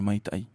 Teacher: Le dernier A et le I, il y a une glottale aussi. On le rajoute par un K, maitaki.